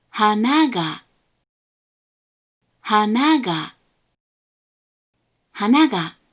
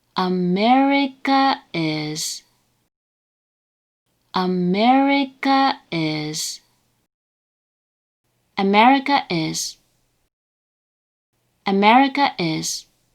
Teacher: in this pattern the words first mora has a low pitch the second mora has a high pitch and all remaining mora within the word have a high pitch however the particle then attaches with a low pitch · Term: tail high